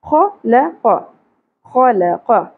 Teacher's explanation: زیادہ نہیں کھینچیں گے خا اور قاف کو پر پڑھیں گے خا کی صفت یہ ہے کہ اس میں خراش اپ کو سنائی دے گی